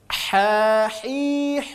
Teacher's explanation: kita bunyikan huruf ha dulu ya ini murni keluar dari tengah tenggorokan